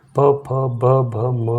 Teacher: प, फ, ब, भ, म का ओष्ठ है।